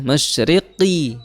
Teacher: qaf itu juga makhrajnya adalah di pangkal lidah bertemu dengan langit-langit mulut yang lunak